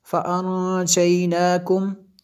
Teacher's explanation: یہاں پہ غنہ ہوگا کیونکہ نون ساکن کے بعد جیم حروف اخفاء میں سے ہے